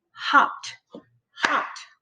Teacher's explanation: because it's unvoiced, the E is silent and it makes a T sound. So we say hopped, hopped, one syllable.